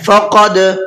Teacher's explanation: قاف کو پر کر کے پڑھنا ہے اور دال کے اندر قلقلہ کرنا ہے